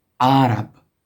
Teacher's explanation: It actually starts with a glottal consonant, and then comes the vowel a